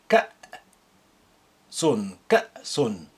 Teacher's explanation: pronounce the hamza with sukun as like a glottal stop